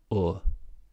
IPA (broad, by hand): ʊ